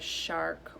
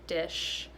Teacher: So a lot of times they'll say the S sound for the SH sound, so they'll say sark instead of shark, or dis instead of dish. And so they really need to round their lips more and get their tongue a little bit further back in their mouth to make that SH sound. So I have them round their lips and say, and get their tongue in the right spot and say shh.